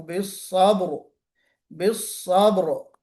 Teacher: रा को पुर करना चाहिए, मोटा पढ़ना चाहिए